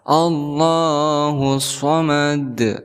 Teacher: huruf Dal yaitu huruf Qalqalah maka harus dipantulkan cara membacanya Allahu Somad seperti itu dihukumi sebagai qolqolah kubro karena ada huruf